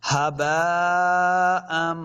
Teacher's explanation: یعنی اپنی آواز کو ناک میں لے کے جانا ہے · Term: غنہ